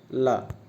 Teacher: पार्श्व जिनके उच्चारण में जिह्वा का अगला भाग मसूड़े को छूता है। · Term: पार्श्विक व्यंजन